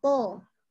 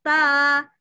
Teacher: to itu dia tidak boleh keluar nafas. Dia huruf asyiddah. Dan dia harus terangkat pangkal lidah. To. Jadi tebal bunyinya.